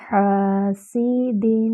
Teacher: حا وسط الحلق سے ادا ہوگی